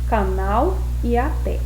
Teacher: posição da sílaba tônica nessas palavras a última sílaba vejam bem o canal tem a última sílaba mais forte e na palavra até tem a última sílaba mais forte também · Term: oxítonas